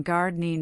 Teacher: The ing ending softened to in. Getting became getting.